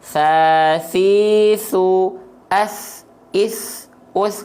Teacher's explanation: Jadi di sini sama seperti huruf dal, tapi pastikan dia keluar nafasnya. Ya, nama sifatnya hams, ya mengalir nafasnya, dan rokhwah mengalir suaranya. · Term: huruf sa